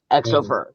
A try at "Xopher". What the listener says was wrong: It's a hard X. Pronounce the X.